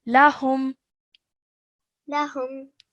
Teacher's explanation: you wouldn't hold the sound of the meme sakin in your nose for more than 1 second. So you just simply say it and then carry on. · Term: izhar meme sakin